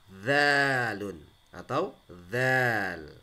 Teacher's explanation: lidahnya agak keluar di antara dua gigi seperti digigit. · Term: huruf litsawiyah